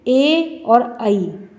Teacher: तो कंठ और तालु से जो वर्ण निकलते हैं वो कंठ तालव्य वर्ण हैं